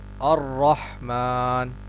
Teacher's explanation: اسی طرح الرحمن میں جو ہا ہے یہاں اس بات کا خیال رکھیں کہ یہ جو ہا ہے اس کا مخرج یہ ہے کہ یہ حلق کے درمیانی حصے سے ادا ہوتا ہے